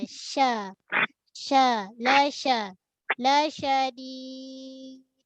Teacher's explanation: Shin tengah lidah dia ada sifat tunggal lah. Kan shin ni sifat tunggal dia tafashi. Hemburan suara yang ada kat dalam mulut kita.